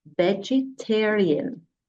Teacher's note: Notice that my voice goes up on the third syllable